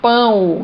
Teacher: então eu tenho o som U, que é uma semivogal